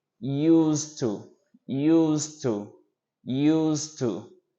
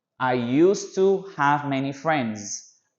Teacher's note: I know that there is a D over here, but because you also have a T sound, you make a kind of a reduction, and it is used to, as if the letter D hadn't been there